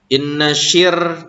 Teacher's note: ini ro sukun disebutnya wajib tarkik karena ro mati sebelumnya kasroh. Jadi kalau ada ro mati sebelumnya kasroh, kemudian ro-nya berharakat kasroh, itu wajib tarkik.